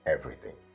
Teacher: it comes from the rising tone down to the falling tone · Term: stress